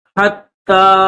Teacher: تا کے اوپر تشدید ہے تو اس کو دبائیں گے